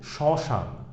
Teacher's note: এই ম ফলার উচ্চারণ হচ্ছে না, তবে ম ফলার উচ্চারণটা হচ্ছে নাসিক বর্ণ এর মতো হচ্ছে বা অ এর মতো হচ্ছে। এখানে নাসিক্য উচ্চারিত হবে, নাক থেকে উচ্চারিত হবে